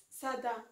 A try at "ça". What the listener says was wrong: Non, ça, il n'y a pas de da. Ça.